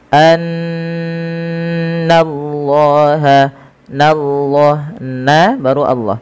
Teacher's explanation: Setiap kita mendapati adanya nun berharakat tasydid, kita tahan dulu suara bunyinya sepanjang 2 harakat karena ia kita namakan dengan bacaan gunnah. Kemudian lafal Allah bila didahului dengan fathah maka dia ditebalkan, tapi nanya tetap tipis